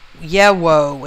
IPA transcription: jewo